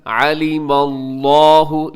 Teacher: لفظ اللہ کو موٹا رکھیے گا کیونکہ لفظ اللہ کے لام سے پہلے میم کے اوپر زبر ہے، اسے آپ نے موٹا پڑھنا ہے لفظ اللہ کو۔